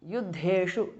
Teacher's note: Yuddheshu, the second dha is mahapranaha.